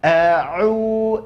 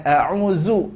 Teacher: Jadi bukan a'uzu, enggak. Makhraj huruf dha adalah ujung lidah nempel ke ujung gigi seri atas, maka otomatis lidah akan keluar dari batas giginya. Maka keluar a'udzu, bukan zu, ya.